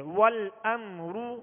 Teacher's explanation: را کے پیش کی ادائیگی, دونوں ہونٹوں کی گولائی, کھینچیں گے بھی نہیں اور معروف طریقے سے پڑھیں گے